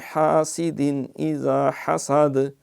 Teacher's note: حاسدن یہاں اظہار ہے، کیونکہ تنوین کے بعد اذا کی حمزہ آ گئی